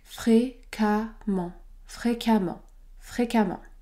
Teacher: quand nous avons la combinaison e mm à l'intérieur d'un mot il n'y a pas de voyelle nasale · Ici, c'est un adverbe qui se termine par EMM, ENT et généralement, ces adverbes-là se prononcent amant. Le E se prononce A, amant. Ce mot se prononce donc fréquemment, fréquemment, fréquemment.